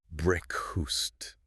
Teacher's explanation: The vowel in fast becomes what linguists call a schwa. It's very lazy, relaxed sound. · The emphasis is entirely on the first syllable.